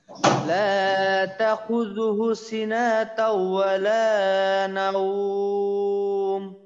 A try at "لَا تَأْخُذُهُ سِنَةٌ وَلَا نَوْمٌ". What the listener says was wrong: আচ্ছা, এখানে কিন্তু সিনা তাও না, সিনা তু, সিনা তু। আচ্ছা, আর একটা হলো হু, এখানে কিন্তু টান দিতে হবে, এখানে টান দিতে, হু টান হবে এবং এইখানে তাই দুই পেশ। আর একবার লা তাখুযুহু সিনাতু ওয়ালা নাওম।